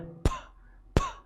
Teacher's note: ये जो पहली साउंड है ये है फ, फ, कोई भी वाइब्रेशन जो है वो फील आपको नहीं होगी, ये वॉइसलेस साउंड है।